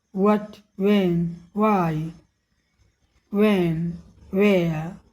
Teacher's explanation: WH वाले शब्द जैसे व्हाट, व्हेन, व्हाई में H का उच्चारण अक्सर नहीं किया जाता है। व्हाट, व्हेन, व्हाई नहीं, इन्हें व की ध्वनि से ही शुरू करते हैं।